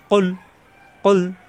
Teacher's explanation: লামের মাখরাজ জিহ্বার আগার কিনারা উপরের দাঁতের গোড়ায় লাগিয়ে